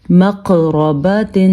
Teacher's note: قلقلہ بھی کیا، یعنی کہ جھٹکا دے کے پڑھا ہے، اور حروف مستعلیہ ہونے کی وجہ سے ہم نے قاف کو پر پڑھا ہے